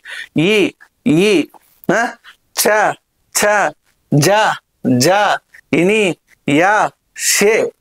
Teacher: ఇవి ఉచ్చరించినప్పుడు ఈ ఉత్పత్తి అనేటువంటిది తాలువు ద్వారా జరుగుతుంది అంటే తాలువు దగ్గర జరుగుతుంది తాలువు ద్వారా బయటకి అనేటువంటి రావడం జరుగుతుంది. ఇ ఈ ఆ ఛ ఛ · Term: తాలవ్యాలు